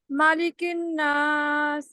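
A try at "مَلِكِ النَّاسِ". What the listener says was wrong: ملک الناس. ملک الناس، لام کی نیچے مالک اور ملک میں بہت فرق ہے، مطلب کا بھی فرق ہے، ٹھیک ہے، اس لیے یہ مالک الناس نہیں ہے، ملک الناس ہے.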